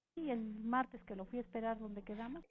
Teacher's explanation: Ascendente, descendente en quedamos, damos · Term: circunflejo